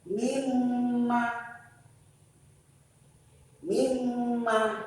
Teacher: Mimma, nunnya hilang masuk ke huruf mim. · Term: idgham bi gunnah